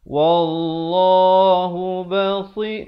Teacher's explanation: Dikena baca dengan ditukarkan bunyi asalnya basirun, ron rin run. Tetapi bila datang ba, dia ditukarkan kepada bunyi mim yang nipis. Basiru, yang nipis 2 harakat. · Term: iqlab